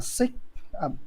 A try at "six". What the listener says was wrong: really pronounce that x on the six six six six yes thank you so six all right not sick because it's a different word right six